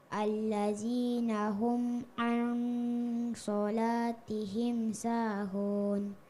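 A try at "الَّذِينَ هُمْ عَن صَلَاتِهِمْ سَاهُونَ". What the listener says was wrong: Coba kasih tebal itu huruf so. So-nya kasih tebal nak. Huruf isti'la. So. Al-sholah.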